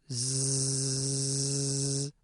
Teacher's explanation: Now, contrast this with the sound z. Notice how this sound is much louder and that there's a buzzing quality to the sound? This buzzing quality is called voicing, and a sound that uses voicing is called a voiced sound.